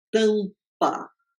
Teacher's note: A segunda sílaba, vocês veem que nós temos uma consoante oclusiva bilabial. · Eu quero explicar que nós vamos começar com a conversão de uma vogal nasal, que é a vogal nasal an, quando ela está dentro do vocábulo, né, uma sílaba interna